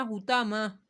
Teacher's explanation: طا کو موٹا پڑھنا ہے اور لمبا نہیں کرنا